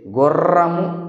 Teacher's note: నాలుక కొన దంత మూలాన్ని కంపితం, కంపనలు చేయడం వలన పుడుతుంది కాబట్టి బండిరాని కంపితం అంటారు. తాడనలు చేస్తుంది అంటే కంపనాలు, ప్రకంపనలు చేయడం.